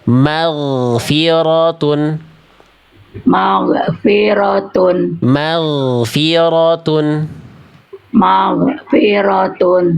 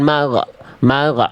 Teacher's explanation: Nah, kalau yang itu kesalahannya mantul. Mag harusnya enggak ada bunyi e. Bunyi ngalir suara bukan bunyi bunyi bunyi konsonan.